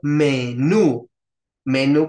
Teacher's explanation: solamente si es aguda y Cómo sabemos si es aguda porque tiene que tener la sílaba tónica la que suene más fuerte hasta el final